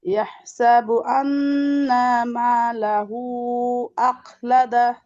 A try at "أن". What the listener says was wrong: আন্না নুনে টান হবে না।